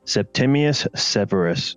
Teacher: The S creates an open hissing sound as well as providing some alliteration.